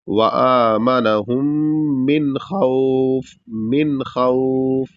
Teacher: نون کو پورا ادا کریں گے اور ناک میں آواز نہیں لے جائیں گے، اور بغیر غنہ کیے اس کو پورا پڑھیں گے۔